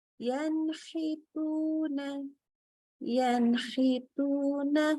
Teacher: Maka kita baca huruf nunnya jelas, nggak pakai ditambahkan lagi gunnah. Ya, tadi nun kan sudah pasti huruf gunnah, tetapi kita tidak memanjangkan lagi gunnahnya, tidak tambahkan lagi gunnahnya. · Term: idhar halqi